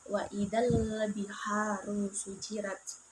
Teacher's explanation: Dan alif lam qamariyah yaitu alif lam bertemu dengan ba dibaca secara jelas